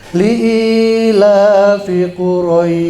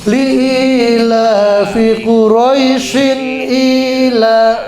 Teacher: Itu panjang. Kalau kita bacanya berhenti di situ di pas ayat itu jadi panjang. Namanya madlin. Tapi kalau kita bacanya sambungin ke ayat berikutnya, dia pendek. Tadi kita baca waqaf namanya, berhenti.